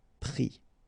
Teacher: final s not pronounced, but still you need to write it